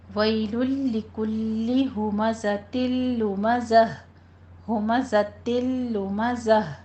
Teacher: ویلن کو بھی لام کے ساتھ ملانا ہے، ادغام کر دینا ہے، یہ بغیر غنے کے ہے، اور ہمزۃ میں بھی بغیر غنے کے ادغام کرنا ہے، ادغام بلا غنہ کہتے ہیں اس کو۔